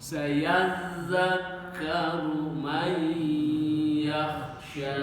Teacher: Jadi nun mati menghadapi huruf ya itu dibacanya guna makhrajnya khaisum dari rongga hidung